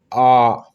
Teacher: जब आप बोलेंगे तो आपका मुंह का जो आकार होगा वो सबसे अधिक खुला होगा, उसे ही हम लोग विवृत कहते हैं।